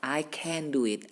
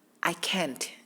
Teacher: The pronunciation of can is can. Biasa kalau bisa itu lebih smooth. I can do it. Tapi kalau tiba-tiba kayak terhentak begitu ya, I can't. Itu biasa kalau tiba-tiba terhentak itu biasanya tidak bisa.